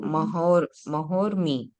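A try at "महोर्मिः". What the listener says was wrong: Read the Visarga also. Visarga also we have to.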